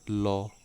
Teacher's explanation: मुख्य द्वार जो आपका होता है बीच में ही बंद हो जाता है और हवा दोनों ओर से निकल जाती है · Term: पार्श्विक वर्ण